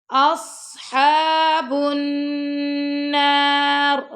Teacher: یہاں پہ آپ نے غنہ کیا اور اس سواد کو موٹا پڑا، اس اور سواد پر ہم نے ہمس بھی کیا ہے.